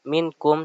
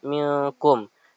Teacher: harus dibaca minkum dengan samar atau dengung karena suara nun mati menyambung dengan huruf kaf